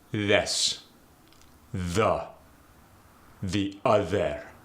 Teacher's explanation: in the Arabic dialect, that TH stays a TH. It's almost overly stressed.